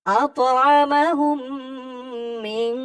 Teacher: ইকফা গুণনাটা এমন হবে, নাকের ভিতরে লুকিয়ে গুণনা করে পড়তে হবে